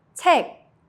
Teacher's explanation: The sound stops at the back of your throat. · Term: soft K